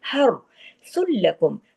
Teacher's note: हर रा के ऊपर पिछले हा के ऊपर जो जबर है ना, उसके असर की वजह से रा हैवी पढ़ा जाएगा